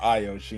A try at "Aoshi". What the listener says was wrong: And also it's pronounced Aoshi, not Ayoshi.